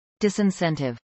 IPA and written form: ˌdɪsɪnˈsɛntɪv (disincentive)